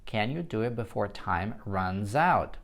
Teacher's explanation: Обращаю внимание, что соединяем слова, если у вас есть согласный звук с гласным на стыке runs out, еще и звонкий звук S